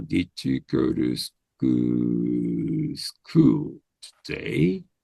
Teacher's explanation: At the end, you have to have a raising tone